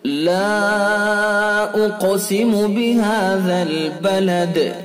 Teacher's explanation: الف حرف مد ہے اور اس کے بعد حمزہ دوسرے لفظ میں ہے، لہذا مد منفصل ہوگا۔ یہ مد منفصل، اس کی مقدار 2 سے 4 الف تک ہے، 1 الف کی بھی گنجائش ہے۔